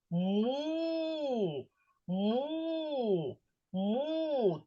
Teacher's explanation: звук м який утворюється за допомогою наших губок да які змикаються · до приголосного звука м приєднується голосний звук у І тому ми можемо тягнути коли кажемо склад му